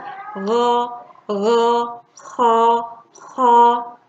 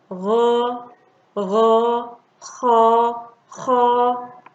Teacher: Ada huruf ghain dan huruf kha. Jadi gha dan kha ada di bagian atas tenggorokan.